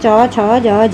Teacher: च छ ज झ ये सब आपके तालु में आ जाएंगे।